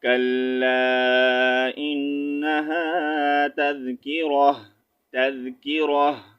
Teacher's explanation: تا کا ساؤنڈ ہم نے ہا میں چینج کرنا ہے